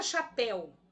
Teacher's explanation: A sílaba pel é a mais forte, oxítona.